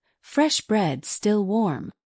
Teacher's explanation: Hear how still warm blends smoothly without a break. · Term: connected speech